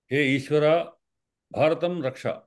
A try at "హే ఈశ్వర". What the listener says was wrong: ఈశ్వర అని దీర్ఘం లేదు, హే ఈశ్వర. మనం మాట్లాడేటప్పుడు ఒక్క నిమిషం సార్, మనం మాట్లాడే ఉచ్చారణలో హ్రస్వానికి హ్రస్వంగానే పలికే ప్రయత్నం చేయండి, దీర్ఘానికి దీర్ఘంగానే పలికే ప్రయత్నం చేయండి.